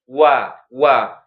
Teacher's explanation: wau itu kan dia makhrajnya kan bibir ya, tapi bukan di ujung bibir dia. Wau itu makhrajnya di tengah-tengah bolongannya tuh.